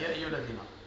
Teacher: هذا مد منفصل ست حركات ديما نشبعوا